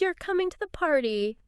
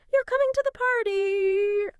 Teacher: In English, we often signal a question just by making our voice go up at the end. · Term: rising intonation question